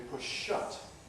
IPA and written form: ˈpʊʃ ˈʃʌt (push-shut)